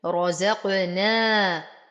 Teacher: أرقق النون وأعطي المد الطبيعي بعدها حقه حركتين